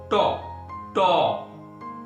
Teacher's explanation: লক্ষ্য করো, জিহ্বা উল্টিয়ে মূর্ধা স্পর্শ করছে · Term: মূর্ধন্য ধ্বনি